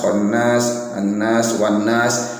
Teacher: Ini dihukumi bacaan mad arid lisukun, yang mana cara bacanya ialah bisa 1 alif atau 2 harokat, sampai bisa juga 3 alif atau 6 harokat. Boleh 1 alif atau 2 harokat, boleh juga ini yang tengah-tengah 2 alif atau 4 harokat, boleh juga 3 alif atau 6 harokat.